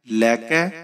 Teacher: کاف کو آپ باریک پڑھیں گے۔